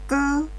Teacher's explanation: bunyi yang dihasilkan dengan cara memberi hentakan pada tenggorokan dan menegangkan pita suara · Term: bunyi yang kuat atau keras